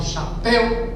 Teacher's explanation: Quando eu falo chapéu, pel é a sílaba tônica.